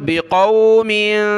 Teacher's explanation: यहाँ मीम के नीचे दो ज़ेर हैं, नाक में आवाज़ पैदा होगी